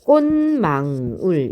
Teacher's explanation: 자, 교체된 다음에 이번에는 이 교체된 디귿이 다시 여기 미음을 만났어요. 비음인 미음을 만나서 비음으로 다시 교체되는 현상이 일어나요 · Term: 비음화 현상